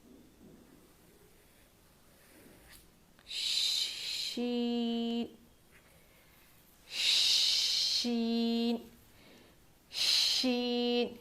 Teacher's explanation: शीन जो है ज़ुबान के, ये जो ज़ुबान है ना, इसके बीच वाले हिस्से से अदा होती है। बीच वाले हिस्से से शीन अदा होता है।